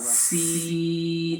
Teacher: سین، زبان کی نوک اور سامنے کے جو نیچے والے جو دانت ہیں ان کے کنارے سے ادا ہوگا